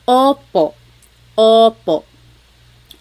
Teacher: Sometimes I think of it like having a ball in your mouth. Your tongue gets kind of pushed back and down a little bit, and the inside of your mouth is open and wide.